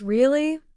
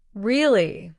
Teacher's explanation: when someone says really with a high tone, it might mean surprise. But if they say really with a flat tone, it might mean disbelief.